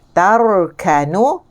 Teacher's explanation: Tarkanu, ra tebal, dan ra ini adalah huruf ra tawassut sederhana. · Ra tebal sebab sebelumnya berbaris di atas. Ya, sebaris di atas.